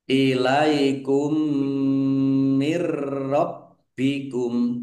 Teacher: Mim tasdid dibaca ghunah atau mendengung. Ditahan biar tampak mendengungnya. · Nun sukun bertemu dengan huruf ro, bacaan idgham bila gunah, masuk dengan tidak mendengung, langsung masuk ke huruf ro, ditandai ro-nya ada tasdidnya tetapi tidak mendengung. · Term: idgham mimi